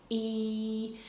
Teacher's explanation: So the sides of the tongue lift up: ee, and it's up high.